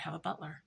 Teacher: Listen to that vocal fry tone.